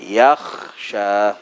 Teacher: Kha bila mati ada apa? Ada hams. Okey, maka pastikan lepaskan angin dulu.